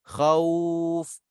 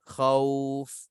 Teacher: Dia kalau lin 2 harakat, khauf, mudah je. Muncung mulut sekali je.